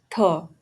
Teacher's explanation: Dental fricative का मतलब है साउंड जो टीथ से बनती है विथ फ्रिक्शन, जैसे थ। थ एक वॉइसलेस डेंटल फ्रिकेटिव है